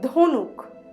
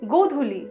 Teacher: It is representing the voiced aspirated dental plosive sound. There is a ordho matra above the letter.